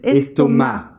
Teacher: escrito con una C al final. Y no se pronuncia la C final